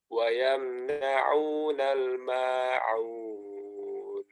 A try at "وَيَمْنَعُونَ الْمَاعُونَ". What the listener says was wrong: Jangan nah wa yamna'una al-ma'un. Makanya jangan imalah, jangan atau kayak taklil itu. Ma jelas maknya. وَيَمْنَعُونَ الْمَاعُونَ.